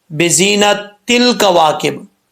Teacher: زا حروف صفیریہ میں سے سیٹی کے ساتھ پڑھا جائے گا